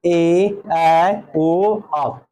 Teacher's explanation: वैसा स्वर जिसे उच्चारण करते समय ह्रस्व स्वर से दुगना समय लगता है। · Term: दीर्घ स्वर